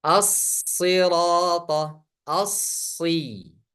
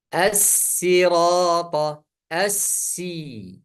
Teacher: Ini huruf sad. Suaranya tebal dan ada suara mendesis. · tempat yang sama, dua-duanya mendesis, dua-duanya mengalir, tapi hanya satu tebal, satu tipis